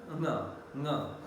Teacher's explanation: Velar because back of the tongue makes contact against the velum. This is the velum, soft palate or velum. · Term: velar nasal